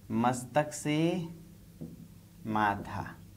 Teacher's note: त ध्वनि अल्पप्राण है, कम हवा निकलती है, त थ में बदल गई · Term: महाप्राणीकरण